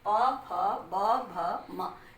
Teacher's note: अब ऊ पू पद्यमान्या नाम पुष्ठ, ऊ ऊ प वर्ग, उपध्यमानीय कहते हैं, ऐसे लगा रहता है, लेकिन इनका प्रयोग हिंदी में नहीं होता, इसलिए आप इसी को देखें, उ ऊ प वर्ग, प फ ब भ म, इसको जब आप बोलेंगे तो आपकी होठ जो है वो आपस में मिल रहे हैं और होठ की सहायता लेनी पड़ रही है, इसलिए इनका उच्चारण स्थान ओष्ठ होता है